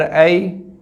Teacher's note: یا ساکن سے پہلے زبر ہے تو یہ یا لین ہوگا، تو یا لین کو ہم بغیر کھینچے بغیر جھٹکا دیے پڑھتے ہیں